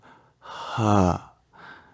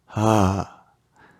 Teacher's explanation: We go h, but we start voicing immediately in Sanskrit